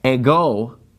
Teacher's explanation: the word a go it gets the accent on the second syllable